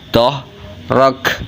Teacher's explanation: dibaca tafhim tebal dan diikuti huruf Kaf yang mati karena waakaf hukum bacanya itu hamz jadi kafnya keluar angin r-nya dibaca tebal